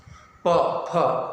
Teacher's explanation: इन वर्णों का उच्चारण करते समय आप देखेंगे आपके दोनों ओष्ठ आपस में टकरा रहे हैं। प, फ ये ओठ आपस में टकरा रहे हैं और इन वर्णों का उच्चारण ओष्ठ से होता है।